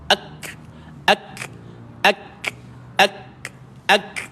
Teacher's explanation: Matikan kaf, dia ada sifat hamas pada dia. Ada sifat hams. Dia keluarkan angin. Bila kita jumpa dengan kaf ataupun ta yang bertanda sukun, dia mesti ada TS.